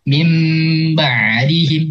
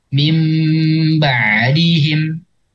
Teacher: huruf nunnya enggak ada jadi berubah jadi mim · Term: iklab